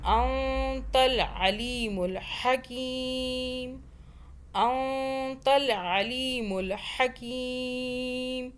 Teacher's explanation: انک انت نون اخفا کا قاعدہ آیا, یہاں پہ نون ساکن ہے, اس کے آگے تا اخفا کا حرف ہے, اس لیے ہم نے نون ساکن پر اخفا کیا, یعنی کہ اس نون کو ہم نے چھپایا, زبان تالو سے نہیں لگنی چاہیے. انت العلیم الحکیم.